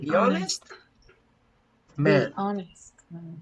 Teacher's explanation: You don't pronounce the H, so you say the honest. And the sound here is the vowel, the one which is pronounced here. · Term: H has no sound